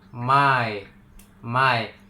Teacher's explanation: bunyi vokal yang bergerak dari satu posisi vokal ke posisi lainnya.